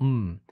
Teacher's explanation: the lips closed and that's where the airstream is being stopped but the air actually leaves the nasal cavity and that's what gives it that different quality hmm you could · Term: nasals